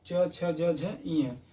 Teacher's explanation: जो आपकी जिह्वा है तालु में, मुख के ऊपर वाले भाग में टच होती है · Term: तालव्य